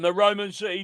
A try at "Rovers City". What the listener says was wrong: Rovers City, not Roman. You're thinking of Bath.